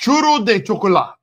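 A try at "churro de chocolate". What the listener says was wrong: Chocolate. No, That's French. It's chocolate. that was French. Chocolate. It's chocolate.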